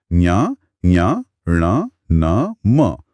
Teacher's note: और हर वर्ग का जो पांचवा अक्षर है न्या, ञ, ण, न, म उसे पंचमाक्षर या नासिक्य कहते हैं। नासिक्य इसलिए क्योंकि हवा नाक से भी निकलती है। · नासिक इसलिए क्योंकि हवा नाक से भी निकलती है